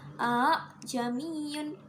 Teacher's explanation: A'jamiyun dibaca a'jamiyun disebut bacaan tashil. Tashil yaitu hamzah yang kedua dibaca antara alif dan hamzah.